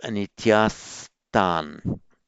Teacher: on its own, this word would be anityaha with visarga, with the following gentle t, the visarga becomes a s